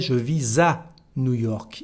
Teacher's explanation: we have a new liaison here between S and A